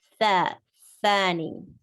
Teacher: Tha is pronounced with the tip of the tongue slightly coming outside to touch the edges of your upper incisors.